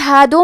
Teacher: حرف الدال کی ادائیگی زبان کے سر اور اوپر والے دانتوں کے اندرونی کناروں سے ہے. کلمت ہادو میں دال پہ پیش ہے تو ہمیں پیش کو ظاہر کرنا ہے.